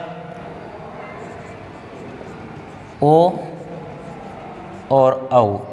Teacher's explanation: ठीक है, उसी प्रकार कंठ तालु था, दो उच्चारण स्थान थे, इसमें कंठ और ओष्ठ है, एर ऊ है, ओ दऊ तो, ओ दऊ तो कंठोष्ठ, ओ दऊ तो कंठोष्ठ क्या आ जाएगा, ओ और औ, इनका उच्चारण किससे होता है, कंठोष्ठ होता है